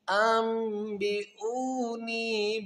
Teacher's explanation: نون ساکن کے بعد جب با آئے گا تو اس با کو میم کے ساتھ اقلاب کریں گے